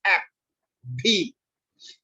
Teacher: labiodental between lower lip and upper teeth